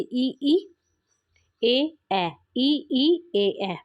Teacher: जिन स्वरों के उच्चारण में जीभ का अग्र भाग काम करता है, जैसे ई, ए, ए, ए, बड़ा ई, छोटा ई, बड़ा ए, छोटा ए। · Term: अग्र स्वर